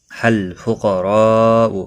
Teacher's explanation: قاف اور را دونوں پر پڑھے جائیں گے، قاف مستعلیہ ہے اس لیے پر پڑھا جائے گا، را زبر کی وجہ سے پر پڑھا جائے گا۔ · حروف مدہ کے بعد حمزہ آیا ہے اس لیے مد متصل لگی ہے، یہاں پر چار الف کے برابر کھینچ کر پڑھیں گے